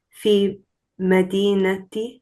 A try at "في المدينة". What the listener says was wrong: No, you have to connect it to lam. So fa, kasra, lam, sukun, fill. Say fill. Fill, Fil.